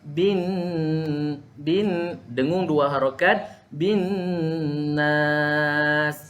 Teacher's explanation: Nun ujung lidah kita akan terus akan terpacak ke atas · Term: huruf nun